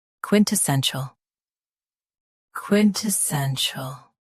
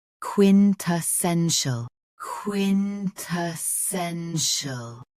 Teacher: US uses CHL. UK uses SHL.